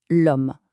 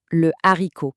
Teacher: On dit l'homme c'est fluide, ça coule tout seul, mais on bute sur le haricot.